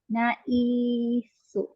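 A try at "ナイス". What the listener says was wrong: Mawala man tong you niya sa last.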